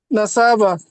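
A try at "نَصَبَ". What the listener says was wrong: নাসা টান হয়ে গেল কেন আচ্ছা বলেন নাসবা সৎ কিসের হরফ আরবি না, মূলত উদ্দেশ্য হচ্ছে আমাদের শর্টটা মূলত যে নরম হরফ নাকি শক্ত হরফ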